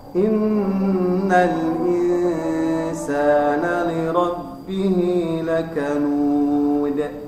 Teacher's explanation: kemudian di ujungnya ada qalqalah huruf dal, maka dibacanya adalah dengan cara disukunnya terakhirnya, maka mulutnya agak dibuka